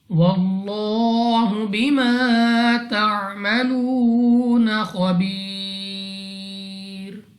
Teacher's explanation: واللہ بما تعملون خبیر، لام آف اللہ سے پہلے حرف پر زبر تو اس لام آف اللہ کو پر یعنی موٹا پڑھیں گے منہ اور آواز کو کھول کر